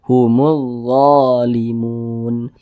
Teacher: huruf da ini dibaca panjang Mad thi'i panjangnya dua harakat